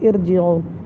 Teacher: تو ارجعو کو ہم باریک نہیں پڑھیں گے بلکہ پر پڑھیں گے، اس لیے کہ یہاں پر را سے پہلے جو لفظ ہے حمزہ اس کے نیچے جو زیر ہے وہ عارضی ہے، اصلی نہیں ہے۔